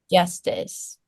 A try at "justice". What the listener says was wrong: Yeah, and make sure that that J at the beginning is a smaller sound that so that it doesn't like bleed into the vowel. Instead of justice, just justice. You see how like it's shorter than that? Justice.